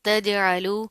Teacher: جیم پر کیا ہے، جزم آ رہی ہے، یہاں پر قلقلہ ہوگا